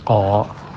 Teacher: yang naik ko itu pangkalnya, bukan pucuknya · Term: isti'la